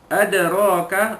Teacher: ada dal mati di tengah-tengah kalimah, qalqalah sughra, lantunan lemah. Raka, ra alif ra tu dibaca tebal baris atas, tafkhim.